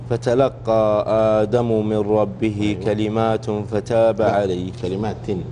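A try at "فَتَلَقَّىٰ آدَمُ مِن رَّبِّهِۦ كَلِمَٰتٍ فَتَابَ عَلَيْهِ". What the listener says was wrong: هذه الحركات يعني كسرة التاء والضمة في آدم في الآيتين، والغنة عندك نقص كثير في الغنة، وأحيانا في موضع ما هو موضع زيادة غنة تزود الغنة، فحاول أنت تركز على الغنن تتبعها كذا.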